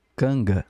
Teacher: se tiver NG, esse G, ele não é tão pronunciado. Ele fica como se fosse uma palavra no português. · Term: G morrendo depois do N